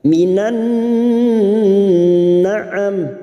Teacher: fokus pada huruf nun yang bertasdid dan mendengung selama 3 harokat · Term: idgham syamsiah